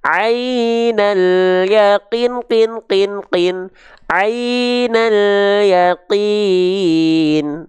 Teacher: kalau dibaca empat harakat berarti seperti kadar melafalkan empat kali pelafalan kinnya